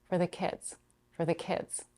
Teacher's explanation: the next two function words for and the are reduced and the following content word kids is stress for becomes for